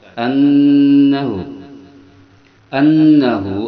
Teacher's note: Nun bertasid hukumnya gunah dia didengungkan dua harakat sehingga bergetar pada hidung